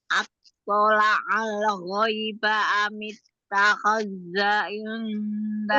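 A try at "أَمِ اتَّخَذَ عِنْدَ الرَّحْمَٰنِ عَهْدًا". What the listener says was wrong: dalnya tidak tasdid. Yang tasdid taknya. Amittakhadza inda rahmani ahda.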